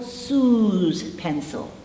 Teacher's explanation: all vowels vibrate and the s must be pronounced as a Z